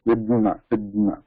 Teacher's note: In that between da and ma, there is a transitional little bit anunasika. There is another nasal sound here. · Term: third yama